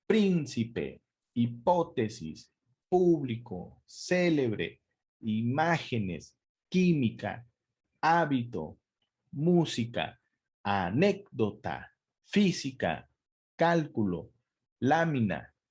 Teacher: Príncipe, hipótesis, público, célebre, imágenes, química, hábito, música, anécdota, física, cálculo, lámina, análisis, próxima, término, látigo, todas son esdrújulas porque si analizamos cada una, la sílaba tónica está en la antepenúltima sílaba de todas